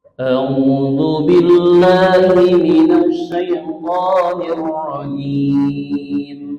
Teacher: jadi rumusnya datar tinggi datar datar tinggi datar itu aja rumusnya Jik pertama datar maka keduanya tinggi gitu ya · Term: Mad Thobi'i